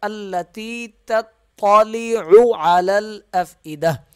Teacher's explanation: پہلا تا باریک ہوگا، دوسرا طا ہے موٹا ہوگا ، اور یہ دو عین ہیں، دونوں کو عین پڑھنا ہے،